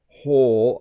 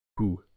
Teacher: Whole, I do purse my lips a little bit, but not as tightly as with who, who.